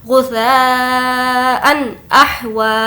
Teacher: हम तनवीन की आवाज़ को ज़ाहिर कर रहे हैं क्योंकि यहाँ पर ज़बर है, हमज़ा है जो कि हुर्फ़ हल्की में से है। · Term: इजहार